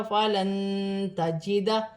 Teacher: نون ساکن کے بعد حرف اخفا میں سے تا آ رہی ہے، اخفا کیا جائے گا